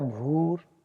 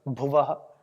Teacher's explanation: पहले वाले भ में दीर्घ मात्रा है भूर, और दूसरे वाले में भुवः में ह्रस्व है भुवः।